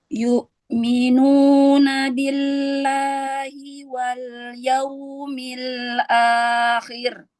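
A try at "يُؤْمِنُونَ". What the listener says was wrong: Yu'minu. Jangan terlalu lama menahan syiddah pada hamzah.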